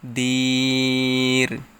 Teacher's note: মদের হরফের বামের হরফে অকফু হইছে তাই ইহাকে মদ্দে আরজি বলা হয় এখানে তিন আলিফ টেনে পড়তে হবে